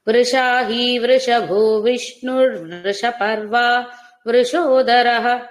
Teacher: ఎక్కడ కూడా వృషభు లో ఉన్న భకారానికి మాత్రమే మహాప్రాణం ఇంకెక్కడ మహాప్రాణాలు లేవు